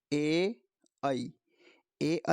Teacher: ए आई का उच्चारण स्थान कंठ तालव्य से